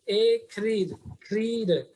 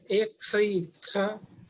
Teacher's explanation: And we have to sound R from throat.